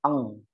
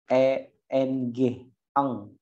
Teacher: Kemudian ikhfa yang cara bacanya mirip seperti baca ang, gitu ya, yaitu mensamarkan bunyi nun menjadi suara eng, ang